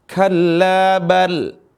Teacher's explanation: saktah itu adalah diam sesaat tanpa napas Kalla bal tapi jangan terlalu panjang tapi sesaat saja TPA napas